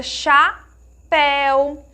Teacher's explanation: em todas essas palavrinhas que nós pronunciamos, tem um som mais aberto. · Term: som aberto